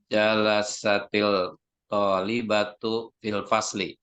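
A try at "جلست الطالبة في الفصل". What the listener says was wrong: Iya, tapi alif lamnya di sini bukan alif lam qamariyah ya. Kalau to, alif lam syamsiyah. Jalasatil talibatu, bukan jalasatil, tapi jalasatil. Langsung tasdidkan, masuk.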